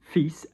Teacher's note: We shouldn't pronounce the S, but we do. It's from the Latin, filio, filius, all this kind of business.